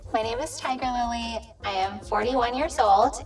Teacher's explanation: you're gonna have to get used to that annoying glottal fry of her voice